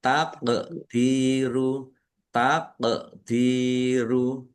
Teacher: qof sukun bacaan qalqalah dibaca memantul ditampakkan pantulannya dal kasrah ya sukun mad Th'i panjang dua harakat.